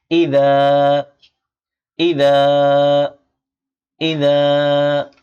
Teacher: জিহ্বার আগা সামনের উপরে দুই দাঁতের আগার সাথে লাগিয়ে উচ্চারণ করতে হয়। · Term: জাল